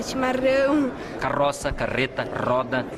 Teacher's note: boa parte dos Gaúchos faz o r com a ponta da língua